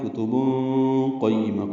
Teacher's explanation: فیہا کتب، کاف تا باریک ہیں، تنوین کے بعد قاف آنے کی وجہ سے اخفا ہے. کتب قیمہ، قاف پر پڑھیں گے، یا سے ملائیں گے.